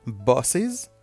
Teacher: as in buses, the last S, you pronounce it as Z